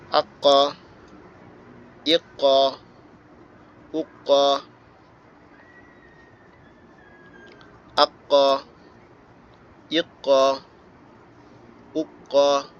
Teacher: ঝাঁকুনি বা প্রতিধ্বনি, অর্থাৎ ডাবল করে পড়তে হবে।